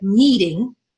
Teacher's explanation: Can you hear how I put all the energy in meet? Ding, and then ding is very short. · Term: stress on the first syllable